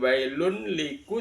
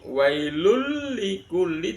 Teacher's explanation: bunyi wailun pada lafaz Un itu dimasukkan ke dalam lam. Jadi bukan wailun liku, tapi wailul. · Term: idgham